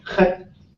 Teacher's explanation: short and high. Stay short, stays high.